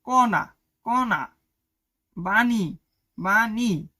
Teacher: মূর্ধন্য বর্ণের উচ্চারণ ন এর মত কিন্তু একটু নাকে বাজবে